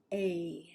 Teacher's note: We start with eh, and then we pull the tongue back